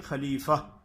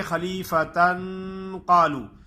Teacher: تو وقف کی حالت میں ہا ادا ہوگی اور وصل کی حالت میں تا ادا ہوگی